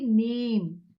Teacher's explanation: அப்ப அந்த ஏ வை நல்லா நீட்டி நே ஏ ன்னு சொல்றோம் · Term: நெடில் ஏ